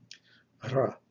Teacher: It's a R. But the Greek R is trilled further towards the front of the mouth.